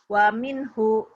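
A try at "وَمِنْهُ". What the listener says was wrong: Pendek. Wa minhu. Wa minhu.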